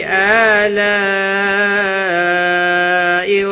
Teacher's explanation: مد متصل ہے، 5 الف کے برابر کھینچ کر پڑھیں گے